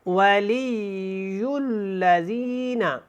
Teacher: اچھی طرح لام اور یا کو ملانا ہے کیونکہ یا جو ہے وہ مشدد ہے، شد والا ہے۔